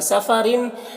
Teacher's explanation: रॉ को बारीक पढ़ेंगे और इस तनवीन में इजहार हो रहा है, इसे जल्द पढ़ना